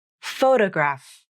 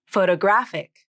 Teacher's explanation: photograph has stress on the first syllable photograph and photographic has stress on the third syllable of the word photographic